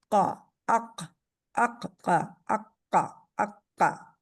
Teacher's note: आगे वाले हिस्से का कोई अमल दखल नहीं है। इसमें जुबान की जड़ ऊपर उठी हुई है। और सिर्फ यही हर्फ है इन सातों में से जिसका रूट जो है वो जुबान की जाड़ के साथ ताल्लुक रखता है। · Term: काफ